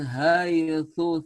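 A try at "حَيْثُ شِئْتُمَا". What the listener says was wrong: Terbalik, haitsu syi'tuma. Sa-nya yang cadal yang pertama. Ha ini hak kecil. Haitsu syi'tuma.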